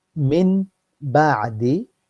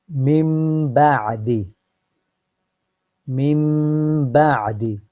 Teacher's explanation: the two haraka is coming from my nose